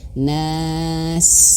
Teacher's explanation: Dan ketika huruf sin itu harus mengeluarkan angin ketika sukun.